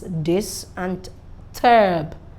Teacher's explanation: So once you get to the second syllable, it goes high.